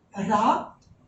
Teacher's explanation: इसके बाद जो रा है, रा, ये रा जो होता है, रा, इसको हम लुंठित व्यंजन कहते हैं, यानी कि इसमें जीभ लुढ़क कर चलती है